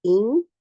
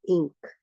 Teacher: So now you know that that first what you do, you make the you don't touch the makhraj of noon, but you prepare the tongue to touch the makhraj of kaf. So get the gunna out first, and then make sure the makhraj of kaf is articulated. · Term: ikhfa